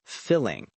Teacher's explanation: If we relax our lips and make the sound short, we get the i sound as in the word filling.